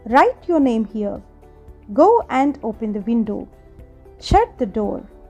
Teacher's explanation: అంటే మనం ఏదైనా ఆర్డర్ కానీ కమాండ్ కానీ ఇచ్చినప్పుడు ఎండింగ్లో మన వాయిస్ డౌన్ చేయాలి. · the falling tone is also used for orders and commands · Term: ఫాలింగ్ టోన్